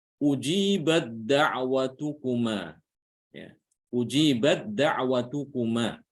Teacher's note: Tanya langsung diidghamkan ke dal ya. Sehingga tidak boleh kita membaca dengan hams.